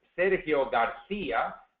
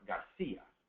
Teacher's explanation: the CI is pronounced like a th in English